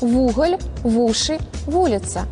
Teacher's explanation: Прыстаўны «в» таксама далучаецца да націскнога «у» у пачатку слова.